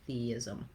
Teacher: You'll just naturally make a gliding sound as you're moving from that tense E to the lax I sound